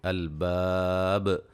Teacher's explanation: با پہ قلقلہ کو خوب واضح کریں گے جب وقف کریں گے